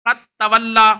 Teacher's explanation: دال کا ادغام تا میں ہو جاتا ہے